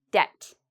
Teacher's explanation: I did not pronounce the b, because when you have b and right after t, usually you don't pronounce the b.